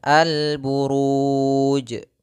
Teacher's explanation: Saya menuliskannya sebagai 'mad arid lisukan', yang artinya kita dapat memperpanjangnya sebanyak dua harakat, empat harakat, atau enam harakat. Lalu ada huruf 'jim' yang kita hentikan, jadi pastilah qalqalah. · Ini kami tulis mad arid disukun, artinya menandakan kita boleh memanjangkan 2 harokat, boleh 4 harokat, boleh 6 harokat. Kemudian ada huruf jim yang kita waqafkan, maka dia harus qalqalah